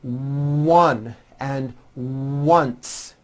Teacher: the w sound occurs in some words beginning with the letter o like in the words one and once